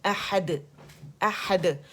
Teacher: خوبصورت باریک سا قلقلہ کریں گے اور مخرج پہ ڈال کے جائیں گے